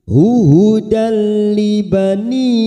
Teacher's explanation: Hudal ada fathah tanwin pada huruf dal yang bertemu lam namanya idgham bila gunnah, masuk pada huruf lam tanpa ditekan, tanpa mendengung, hanya masuk namanya bacaan idgham bila gunnah